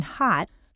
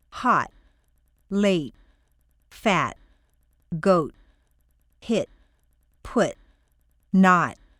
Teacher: staircase is in the held position by held I mean that the tongue is in the T position but the air isn't released